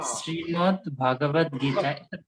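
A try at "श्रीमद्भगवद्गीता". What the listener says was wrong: भगवत गीता कहिए, भागवत नहीं है वो, श्रीमद् भगवत गीता।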